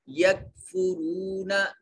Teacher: یکفرون میں را کو موٹا کر کے پر کر کے پڑھا جائے گا، مفخم اس لیے کہ را مضموم ہے، اور جب را مضموم یا مفتوح ہو تو مفخم ادا کریں گے۔